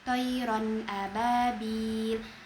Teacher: Lalu pada bagian thirron ababil huruf ro berharakat fathatain bertemu dengan huruf alif maka hukum tajwidnya izhar halqi. Dibaca dengan jelas tanpa dengung.